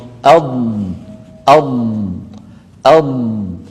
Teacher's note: ولاحظوا بأن صوت الضاد رخو، يعني قابل للمط